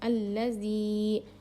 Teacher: یائے مدہ کو ہم یک الف کے برابر کھینچ کر پڑھیں گے · زبان کی نوک کو سامنے کے 2 دانتوں کے کنارے کو لگانے سے زال ادا ہوتا ہے. زال کو ہم ہلکا پڑھیں گے.